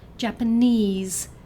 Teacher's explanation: 'Japanese' has a stress on the third syllable So it's like 'Mandarin'.